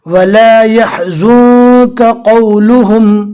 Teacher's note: काफ और कौफ दोनों जमा हो गए, ऐसा ना हो जाए कि दोनों पूर हो जाए या दोनों बारीक हो जाए। वला यहज़ुनका क़ौलुहुम, मीम जो निशानी वो वक्फ़े लाजिम की है, जहाँ पर भी मीम की निशानी आवे वहाँ पर रुकना ज़रूरी है।